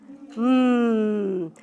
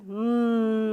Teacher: we don't add that schwa sound after it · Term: m sound